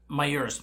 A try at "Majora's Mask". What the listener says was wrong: Majora's. Jora. Jora. Pronounce the J in English.